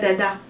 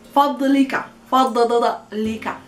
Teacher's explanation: the ض of فضلك is a guttural sound that comes from the behind the throat